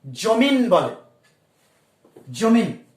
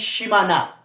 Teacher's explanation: এখানে খুব স্পষ্টভাবে দেখো জমি শব্দের শেষে ন ব্যঞ্জন বা সীমা শব্দের শেষে ন ব্যঞ্জন, এদের আগম ঘটেছে। তাহলে একে আমরা বলতে পারি অন্ত ব্যঞ্জনাগম।